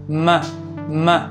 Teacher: Nasals are pretty self explanatory, they’re when we block the air leaving our mouth and it just comes out the nose. So a bilabial nasal is an [m] sound, because you close your lips together.